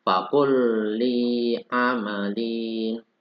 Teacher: Cara membacanya yaitu seperti tasdid, fakulli ditahan dan ditekan 2 harokat. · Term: idgham mutajanisain